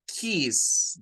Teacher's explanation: El sonido es S. Es la S sin vibración.